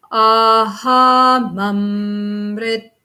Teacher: And then at that last note, you go up in the middle of the vowel